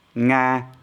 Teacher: level tone with the initial ng ng sound